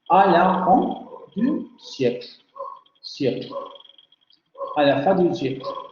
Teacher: al final de un grupo o secuencia fónica, la vocal media central labializada no se pronuncia